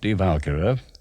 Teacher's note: which is how Wagner pronounced it with the accent on the first syllable